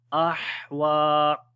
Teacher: on the ha we make hums quality, and also the ha sound comes from the middle of the throat.